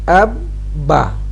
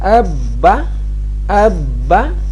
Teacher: جب بھی ہم اب با کرتے ہیں تو چھوٹا سا پاز، وقفہ سا، سٹے اس کے اوپر کرتے ہیں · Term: شد